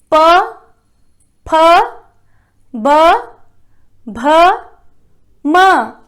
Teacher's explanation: ओष्ठ है, ओष्ठ है, ओठ, ओठ, ओठ आपस में टकराते हैं। देखिए प वर्ग में प, फ, ब, भ, म, आपस में ओठ टकराए, उच्चारण स्थान, तो इनको जो है कहते हैं ओष्ठ्य ध्वनियां।